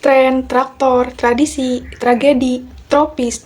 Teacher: Dalam pengucapan, lidah menempel sebentar di langit-langit mulut untuk bunyi T, lalu langsung ke posisi getaran untuk bunyi R. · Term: Gugus konsonan TR